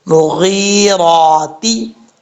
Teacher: آگے یا مدہ ہے، ایک الف کی مقدار لمبا کریں گے، را کے اوپر زبر ہے، کھڑا زبر، را کو پر پڑھیں گے